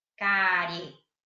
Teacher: Então, você tem que ver que você escuta o som do E como sendo mais forte. Então, o E é uma vogal e o I é uma semivogal, tá?